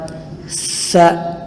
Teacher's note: سا کو پڑھتے وقت زبان اوپر کے دانتوں کے ساتھ ٹچ کر کے ادا کرنا ہے